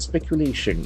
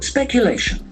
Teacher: Accent falls on third syllable.